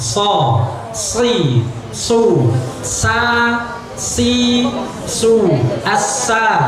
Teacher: Maka tebalkan sod, tebalkan sin dengan cara mengangkat posisi lidahnya.